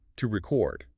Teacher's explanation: If you emphasize the first syllable, it's a noun, a record. If you emphasize the second syllable, it's a verb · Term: word stress